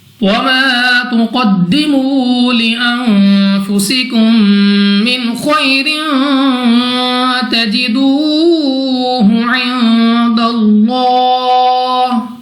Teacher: الف سے پہلے زبر الف مدہ 2 سیکنڈ تک لمبا کرنا ہے · دال ہمارے پاس قلقلہ مشدد ہے، تو خوب جماؤں کے ساتھ ادا ہوگا · واو ساکن سے پہلے پیش واو مدہ 2 سیکنڈ تک کھینچ کر پڑھیں گے۔ نون ساکن کے بعد فا حروف اخفا میں سے ہے، اخفا کا قاعدہ ہے غنہ کر کے پڑھا جائے گا۔ سین کو سیٹی والی آواز کے ساتھ پڑھنا ہے۔ · قاف مستعلی میں سے موٹا پڑھیں گے منہ اور آواز کو کھول کر